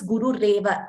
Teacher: So when it combines, it becomes Guru Reva. The Visarga goes and Ra comes in its place.